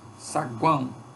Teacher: eu tenho uma semivogal seguida de vogal seguida de semivogal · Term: tritongo nasal